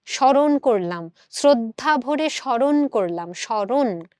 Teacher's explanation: তো এই দন্ত সময়ের জায়গায় আমি তালব্য স দিলাম এবং যুক্ত ম থাকার কারণে আমরা এটাকে একটু নাসিক্য করে চন্দ্রবিন্দু দিচ্ছি এবং র এর সাথে একটা অ যুক্ত আছে।